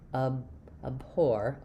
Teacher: But you can hear how it I'm not really doing abhore. There's no release of that B. I just release right into the H sound. And then this is a case where because the O R is stressed, letters O R do say or in this word. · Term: unreleased